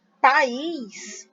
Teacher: E é uma oxítona, é uma oxítona porque a sílaba forte é a última, é o is.